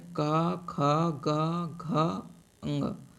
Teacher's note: क वर्ग के उच्चारण स्थान कंठ है